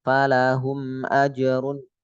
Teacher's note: enggak boleh mantul karena bukan huruf Qalqalah